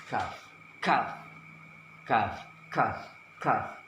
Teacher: Kaki K ada keluarnya napas, disertai keluarnya napas K, K, K, K.